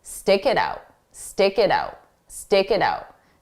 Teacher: I'll take that k sound and I'll transfer it to the next sound to help smooth those out · the t is actually between two vowels so if we connect those sounds together we'll pronounce the T like a soft d